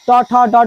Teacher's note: ट ठ डॉ डॉ बोलते समय जीभ हल्की से मुड़ जाती है इसलिए ट वर्ग का उच्चारण स्थान मुर्धा